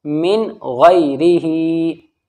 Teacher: نون ساکن کی آواز کو ہمیں صاف کلیئر ظاہر کر کے پڑھنی ہے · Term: اظہار